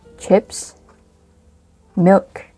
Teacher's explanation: But when you say chips, milk, yeah, you have to use the rising tone. · When we say noodles, you have to use the falling tone because your sentence is finished.